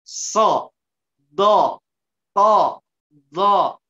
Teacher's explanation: Hanya huruf waw saja. So, suaranya menebal, kemudian bagian daripada lidahnya mengangkat ke atas. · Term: dibaca tebal